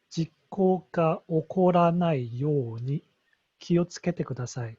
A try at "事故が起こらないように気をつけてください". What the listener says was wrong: Good. Yes. Yeah.